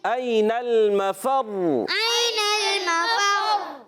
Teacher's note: مشدد را اپنے حرکت کے تابع بھی ہوتی ہے، مگر یہاں را کی پیش نہیں پڑھیں گے، ہم وقف کر رہے ہیں، مگر را مشدد رہے گی اور 2 مرتبہ پڑھی جائے گی. ایک مرتبہ اپنے والے پہلے جو متحرک حرف فا سے اور اپنی دوسری حرکت کے مطابق، مگر حرکت کے مطابق پیش نہیں پڑھیں گے، مگر ہم یہاں وقف کر رہے ہیں تو را مشدد رہے گی.